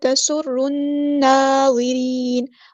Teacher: تسر را ہمارا یہاں پہ ہیوی لیٹر ہے اور شد والا حروف ہے تو اچھے سے واضح کر کے ادا کرنا ہے جماؤ کے ساتھ. تسر نون پہ ہمارے پاس شد بھی ہے اور کھڑا زبر بھی ہے، یعنی غنہ زمانی بھی ہو رہا ہے اور مد اصلی بھی ہو رہی ہے، تو اس کو اچھے سے ادا کرنا ہے.